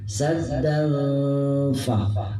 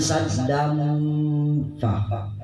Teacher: Saddan fa, bukan saddam fa, karena fa itu tempatnya ada pada di ujung bibir. Fa dengan posisi ada pada hampir bersentuhan dengan gigi.